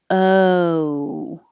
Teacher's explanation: Most other languages just have a pure O, and the tongue isn't moving, the lips aren't moving, it's one position. But American O has two parts, so there's movement.